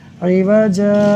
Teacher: جب دو زبر کی تنوین پر وقف کریں گے تو پھر ہم الف مدہ سے بدل دیں گے